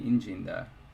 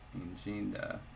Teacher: It's stressed on the first syllable. In the reduplicative verbs, the prefix actually gets the stress.